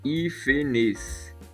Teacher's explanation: tem 3 sílabas, hífenes, sendo a antepenúltima a sílaba tônica. Então temos uma proparoxítona, e como toda proparoxítona é acentuada, hífenes deve ser acentuada.